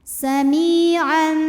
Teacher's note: karena ada tanwin fathah menghadapi huruf ba maka bunyi tanwinnya diubah jadi mim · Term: hukum iqlab